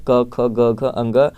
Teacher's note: कंठ से आपका आता है क, जो क वर्ग का होता है वो सभी आते हैं